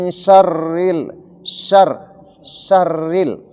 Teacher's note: Rinya itu karena dia kasrah huruf ro kalau kasrah dia bunyinya tipis.